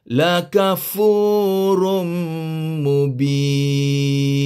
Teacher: bertemu dengan mim jadi dia idram bhunna atau idram maal gunah kita kena masukkan bunyi tanwin ini ke dalam bunyi mim jadi bunyi Rum Rum tanwin asalnya bunyi Run macam n eh